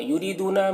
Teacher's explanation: یریدون میں بھی را کو باریک پڑھنا ہے اور یا مدہ ہے، اسے ایک الف کے برابر کھینچیں گے۔